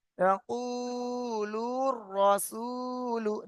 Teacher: মাঝখানে আলিফ লামটা বাদ হয়ে যাচ্ছে, পড়া হবে না। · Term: হরিবের শামসির